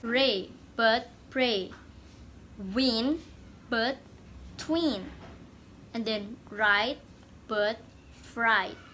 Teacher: The second one is devoiced. Sounds such as the liquids L, and W, which are usually voiced in English, may be devoiced in certain phonetics contexts. Those contexts occur when the liquids or glide follow a voiceless stop or fricative in the same syllable.